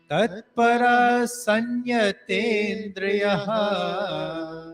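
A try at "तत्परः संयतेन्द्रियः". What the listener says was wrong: Pay attention to the visarg. Paraha. Tatparaha sanyatendriyaha.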